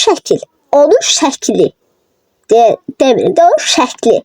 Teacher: iki hecalı sözlərdə ikinci saitin düşməsi